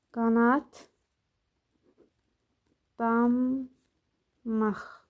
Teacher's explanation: D, t-ya çevrilir sözün kökü olduğuna görə və digər samitlərdə dəyişir.